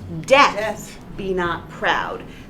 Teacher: So it's iambic pentameter most of the way through with the very first iamb reversed to be a trochee.